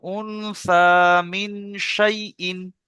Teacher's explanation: নুন নুন সাকিনের পরে শিন এসেছে, নুন সাকিনের নুন সাকিনের পরে হরফে ইকফা 15টি অক্ষরের মধ্যে শিন এসেছে, তাই নুন সাকিনকে নাকে তুলে একালিক পরিমাণ গুণনা করে পড়তে হয়, একেই বলে ইকফা